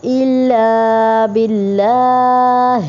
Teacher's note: اللہ کے لام کو یہاں پہ باریک پڑھیں گے کیونکہ اس سے پہلے زیر آ رہی ہے